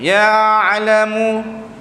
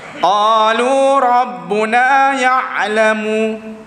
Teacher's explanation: Huruf ain antara 1 poin ke 2 harakat. 1 poin 2 harakat lebih kurang.